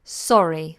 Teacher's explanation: Now we have a vowel sound after, so we make sure we pronounce those R's nice and clear.